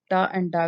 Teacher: Pakistani speakers speak ta and da with the help of the tongue and the hard palate. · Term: retroflex